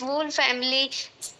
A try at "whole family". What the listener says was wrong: It's not वूल family, it's होल family. होल family होता है.